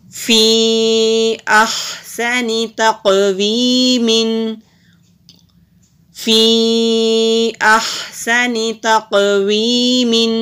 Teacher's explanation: فا کے نیچے زیر ہے، اوپر مد بھی ہے، اس کو ہم 3 سے 4 حرکت کے برابر لمبا بھی کریں گے۔ قاف حروف مستعلیہ بھی ہے، موٹا بھی کریں گے اور کلکلا بھی ہوگا، اور یا سے پہلے زیر ہے تو ایک الف کے برابر لمبا کریں گے۔